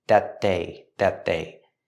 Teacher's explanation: We see the T at the end of that, linked to the next sound, that they. Make a stop T with that at the end, and link to the next word, they.